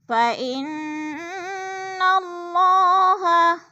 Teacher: فَإِنَّ کی نون مشدد ہے، غنہ کریں گے، سختی سے جما کر پڑھیں گے